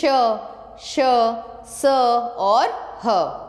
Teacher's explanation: इन व्यंजनों का उच्चारण करते समय वायु मुंह के विभिन्न भागों से रगड़ खाती हुई बाहर आती है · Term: ऊष्म व्यंजन